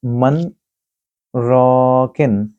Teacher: میں نے من کے بعد 1 یا 2 سیکنڈ کے لیے وقفہ کیا ہے، لیکن میں نے سانس کو نہیں توڑا، اسی سانس سے ہی میں آگے پڑھنا شروع کرتا ہوں، من راکن۔ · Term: سکتے